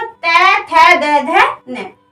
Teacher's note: जो हमारी जीभ है वो दांतों को टच करेगी। मतलब दांत हमारे जीभ पे आकर लगेंगे।